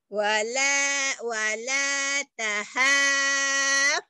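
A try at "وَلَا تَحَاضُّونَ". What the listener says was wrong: Du, tahaddu bukan tahasu, tahaddu. Dod itu. Wala tahadduna. Tak, jangan to, tak dulu. Wala tahadduna.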